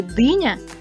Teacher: в слові диня перший звук д твердий